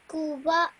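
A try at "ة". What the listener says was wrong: This is not a qaf, this is a this is ta, okay, the letter ta, tal marbuta, okay, special kind of ta. So it has a dhamma on it.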